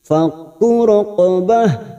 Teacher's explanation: Antara huruf kaf dan huruf qaf ini berbeda karena huruf qaf adalah huruf isti'la, huruf tebal.